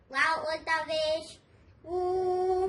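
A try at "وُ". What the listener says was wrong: कि वाव को ऊ नहीं पढ़ेंगे, वाव उल्टा पेश ऊ। वाव को वू पढ़ेंगे, वाव उल्टा पेश वू।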